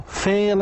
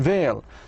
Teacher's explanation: F is voiceless and V is voiced. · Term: minimal pairs